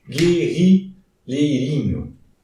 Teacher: Ali está o GU sem pronúncia do U.